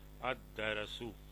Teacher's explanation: شمسی لفظ ہے، اس لیے لام نہیں پڑھا جا رہا